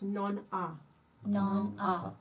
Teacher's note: che tanto a dir non ha. And it's, don't pronounce the H. It's non ha.